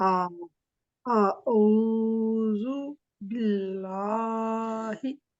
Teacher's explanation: जब बे के नीचे जेर है और आगे लाम है, तो इसकी आवाज, लाम की आवाज बारीक होगी